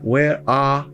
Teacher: Esse you, o som não é vocálico. Ele não é som de vogal. Parece, mas ele não é. Já o A é um som de vogal. Logo, esse R se articula.